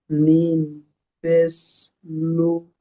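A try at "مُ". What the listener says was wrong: মিম পেশ লু হয়, মিম পেশ মু, ময়াস মু, মিম পেশ। জি না, মিমের ওপরে পেশ আছে, মিমের ওপরে পেশ পেশটি হলো হারাকাত।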